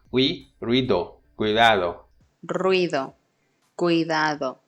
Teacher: the word ruido is 2 syllables, it's not 3, because is a diphthong, it's a rising diphthong. It has an on glide and then head.